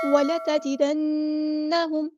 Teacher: جب نون اور میم پہ آتی ہے تو غنہ زمانی کرتے ہیں ہم یہاں پر، ایک الف کے برابر رکتے ہیں. لمبا کرنے میں اور رکنے میں فرق ہوتا ہے.